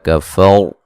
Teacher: را کو موٹا ادا کریں گے، را ساکن سے پہلے زبر ہے